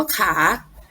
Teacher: มีเสียงพยัญชนะต้นขอเสียงสระอาและเสียงวรรณยุกต์จัตวา